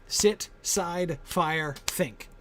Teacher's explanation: with that iambic meter, the unstressed syllable bounces you up to the stressed syllable